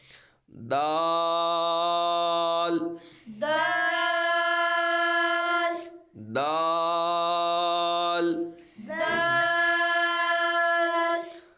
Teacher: خو، خو، دال، دال، دال کو دراز کریں گے کیونکہ اوپر مد ہے اور یہ حروف نطعیہ ہے، زبان کی نوک اور اوپر کے دانتوں کی جڑ سے ادا ہوتا ہے